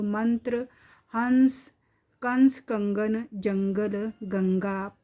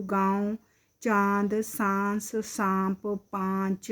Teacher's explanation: अनुस्वार नासिकीय व्यंजन के रूप में बोला जाएगा तथा अनुनासिक नासिकीय स्वर के रूप में बोला जाएगा